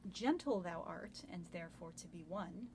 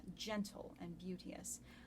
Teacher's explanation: Usually Shakespeare writes in iambs, which is an unstressed syllable followed by a stressed syllable. He's chosen to start both of these lines with trochees, which is stressed followed by unstressed